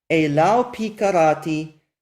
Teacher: This pei is a Begad Kafat letter and has a dot inside it, and it shows you that the previous word closed the syllable or ended in a closed syllable. So this wow in Elau acts as a consonant and makes this diphthong ow, and it closes the syllable